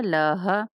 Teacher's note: لام زبر لا، ہا زبر ہا، لاہا، لاہا نہیں کہیں گے، لاہا۔ ٹھیک ہے، انتہائی حلق سے یہ ہا نکلتا ہے